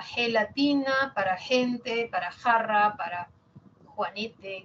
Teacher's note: la velar sorda para gelatina, para gente, para jarra, para juanete